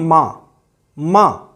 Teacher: जैसे उदाहरण के लिए ले लीजिए, हमने बोला माँ, माँ, तो हमने जो हवा निकाली है वो दोनों होठों को आपस में मिला करके तब हवा को छोड़ा है और एक विशेष प्रकार की ध्वनि निकली है।